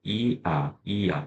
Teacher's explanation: 자, 그중에 야를 보시면 야를 만들 때는 이에서 이아 하지만 이는 짧게 발음이 되고 아는 온전하게 발음을 한단 말이야. 자, 이때 이 짧게 발음되는 그 이를 우리가 반목이다 이렇게 얘기하고요. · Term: 이중 모음